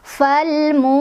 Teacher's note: Falmu ada mad tabi'i karena ada dhammah bertemu dengan waw sukun. Cara bacanya dibaca panjang 2 harokat.